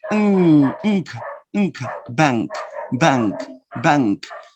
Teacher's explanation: But in the word bank, your tongue doesn't go forward. Your tongue goes backward because of the consonant K, K, velar. So the N becomes velar too, and you produce ink, ink, bank, bank, bank.